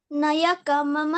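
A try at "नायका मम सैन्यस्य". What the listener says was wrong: ಅದು ನಾಯಕ ಮಾತಾಜಿ ನಯಕಲ್ಲ ಯಕ ದೀರ್ಘ ಇದೆ ನೋಡಿ ನಾ ಯಕ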